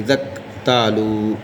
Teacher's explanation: زال سے کاف کو ملائیں گے